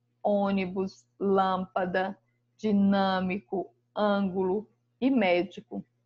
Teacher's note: a sílaba tônica está na antepenúltima sílaba. Então, são chamados de palavras proparoxítonas.